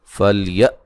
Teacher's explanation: کاف پہ جو مد ہے مد واجب ہے۔ فلیہ حمزہ کو جھٹکے سے ادا کریں گے